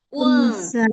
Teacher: Jangan, jangan nempel suara nunnya. Huruf nunnya jangan nempel.